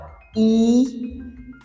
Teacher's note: When we pronounce vowels like E, and our tongue, the front part of our tongue is raised. So this is why they are called front vowels.